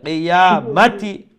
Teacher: মিমের উপরে শুধু জবর, হ্যাঁ জবর ওইটা খাটো রাখতে হবে। কিয়ামাতি, মাতি নয়, কিয়ামাতি, এইরকম।